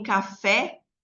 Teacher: Porta não tem acento, mas poderia ter como a palavra café. Em café, o E é uma vogal aberta, né? Porque ele tem uma sonoridade maior aí.